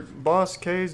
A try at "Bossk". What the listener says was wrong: It's just Bosk. The K is silent.